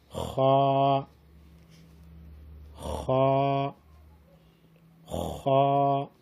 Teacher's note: ادنائے حلق سے منہ کی طرف والے حصے سے ادا ہوتی ہے